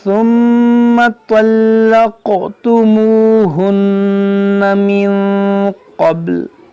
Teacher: دیکھیں میم میں غنہ کریں گے, ثم تو آپ کو موٹا پڑھیں اور قاف میں قلقلہ کریں, یہاں نون مشدد سے غنہ کریں.